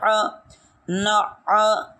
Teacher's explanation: جی ایک بات کا یہاں خیال رکھا جائے کہ یہاں عین پڑھتے ہوئے یہاں بالکل سختی نہیں کرنی، ورنہ یہ عین نہیں رہے گا بلکہ حمزہ بن جائے گا